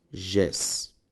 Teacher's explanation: Perceba que as duas palavras são palavras oxítonas, pois a última sílaba das duas é tônica.